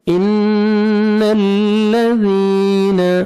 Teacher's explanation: ان الذین، نون مشدد غنہ کریں گے، نوز میں ساؤنڈ لے کے جائیں گے، ذال کو نرمی سے ادا کرنا ہے، 1 سیکنڈ کھینچنا ہے، یا مد ہے، یا ساکن سے پہلے زیر ہے۔